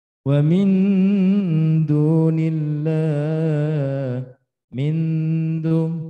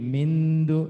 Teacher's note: nun sudah mendekati dengan dal. Dan ini adalah mendekati bacaan idhar disertai dengan samar. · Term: akrob